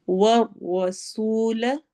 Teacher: व रॉ मोटी पढ़ी जाएगी , सीन में सिटी वाली आवाज होगी, सू वाव मद्दा है,